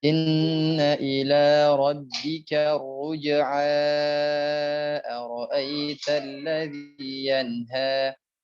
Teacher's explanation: kalau dia dilanjutkan ke ayat selanjutnya 9, panjangkan karena masuknya adalah mad munfasil jaiz atau mad jaiz munfasil